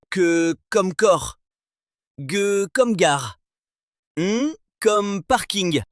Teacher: Les vélères sont les consonnes où c'est le dos de la langue qui vient toucher le palais mou à l'arrière du palais et on a trois cas en français le que le g et le g.